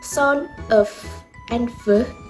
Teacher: these two sounds occur with bottom lips approaching with top teeth and basically they touch each other but they're just enough space left for the air to come out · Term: fricative